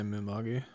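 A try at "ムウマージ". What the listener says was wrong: Mumaji. Well, it's literally not gi. That's the incorrect romanization there.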